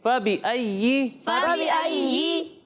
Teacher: ابھی بھی بعض بچوں کی جیم کی طرح آواز آ رہی ہے، یہ جی نہیں ہے